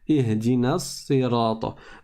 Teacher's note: je ne prononce pas la voyelle longue. Je ne prononce pas le med du tout.